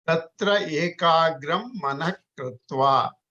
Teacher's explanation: There is no H there. So this is a low energy ga.